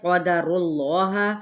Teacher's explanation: را کی پیش کو لام کے ساتھ ملائیں گے تو اس میں جلالہ کا لام پر پڑا جائے گا